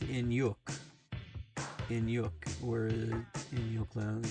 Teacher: In sounds like the English word in. Hyuk sounds like yuck, like with a quick, light guttural or aspirated H sound before the yuck vowel